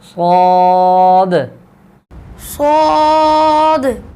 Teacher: सौद को मोटा भी करेंगे اور اس میں صفیر ہے، سیٹی کی آواز بھی آئے گی